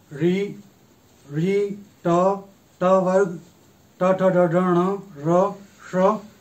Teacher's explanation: इनका उच्चारण स्थान मूर्धा है